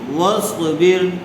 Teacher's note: را ساکنہ سے پہلے زیر آئی ہوئی ہے، اس لیے را ساکنہ باریک ہوگی